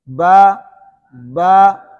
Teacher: با کے اندر جو الف ہے اس کو ایک الف کھینچنا ہے · با کے اندر ہونٹ سختی سے ملتے ہیں